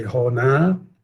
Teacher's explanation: O infinitivo termina em na, né, com o a longo.